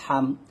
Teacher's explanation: হলকের মাঝখান থেকে চাপ নিয়ে আসতে হবে